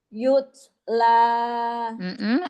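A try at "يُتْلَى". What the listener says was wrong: Domahnya monyongin lagi. Yutla. Pendekin lagi matobi'inya.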